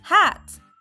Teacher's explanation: Let your tongue lie flat and low in your mouth. Let the air flow out through your mouth. Your voice is off, and your throat should feel calm without vibration. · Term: voiceless sound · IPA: /h/